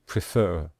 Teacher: we stress the final syllable